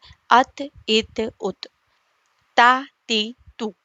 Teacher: تا زبان کی نوک، ثنایا الیہ کی جڑ، ات، ات، ات، تا، تی، تو، زبان کی نوک کو دیکھیے،